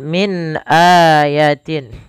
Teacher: min ada nun mati bertemu hamzah, maka dinamakan dengan bacaan izhar. Suara nunnya harus dibaca dengan jelas.